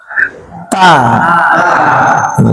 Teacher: Ta diletakkan lidahnya, ujung lidahnya ke pangkal gigi seri dulu. Ta. Nah, kalau kita rasain ada di tangan kita misalnya ta, ada percikannya.